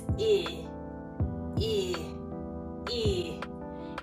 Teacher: I can see that the I sound is a bit lower in the mouth, that I'm moving down